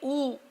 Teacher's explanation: Then when you say you close your mouth. And when you say U, you can't say it is open fully, nor can you say it is closed. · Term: Ukara